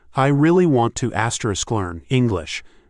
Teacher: Notice how two is almost gone.